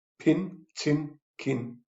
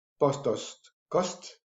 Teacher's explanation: Can have some stops, P and B. P is unvoiced without vocal folds. B is voiced. P, B, bilabials.